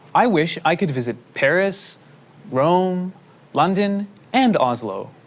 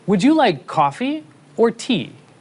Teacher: Sometimes we have a combination of rising and falling intonation. This happens when we list information.